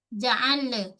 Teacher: dia tak boleh nak lantun-lantun pada huruf lam. Tak ada sifat qalqalah.